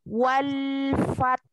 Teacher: ketika wal lam sukun tidak boleh tawalut atau memantul, tidak boleh wale wale, itu salah.